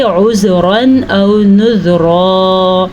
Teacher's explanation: یہ زال آسانی اور نرمی کے ساتھ نکلتا ہے، یہاں پہ آپ نے جھٹکا نہیں دینا جیسا کہ دال پہ ہم جھٹکا دیتے ہیں۔